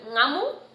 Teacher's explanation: the ng, which starts from the back of your throat